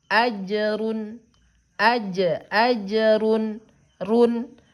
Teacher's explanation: sebelum bertemu dengan huruf gin, suara n-nya jelas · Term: izhar halki